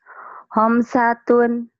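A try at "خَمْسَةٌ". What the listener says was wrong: jangan buru-buru kalau ketemu huruf mati atau tanwin. Khamsatun, ini karena idhar tapi tidak buru-buru. Khamsatun, jangan. Khamsatun, jangan. Khamsatun, M-nya sampai sempurna.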